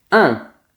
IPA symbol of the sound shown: ɛ̃